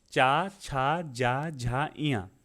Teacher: आपकी सीधी जीभ जो होती है ऊपर जाके तलुए में चिपक जाती हो, इसीलिए ताल हो जाएगा।